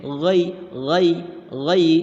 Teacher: Di sini ada ya mati sebelumnya berharokat fathah, masih yang tadi, ini namanya adalah huruf lin ya, yang mana huruf lin tersebut dibacanya lembut dan pendek.